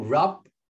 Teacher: kalau rub itu kayak bibirnya tuh agak dimingkemkan sedikit sehingga ada bunyi nutupnya